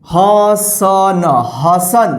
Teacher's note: ह में अ के साउंड आ रहा है, फिर स में आ रहा है, लास्ट में न में नहीं आ रहा क्योंकि लास्ट वाला अक्षर में अ की साउंड नहीं आता है।